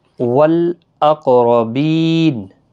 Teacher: بی یا مدہ ہے، وقف کی صورت پہ نون ساکن جب پڑھا جائے گا تو 3 سے 5 الف کی مقدار کے برابر کھینچ کر وقف کریں گے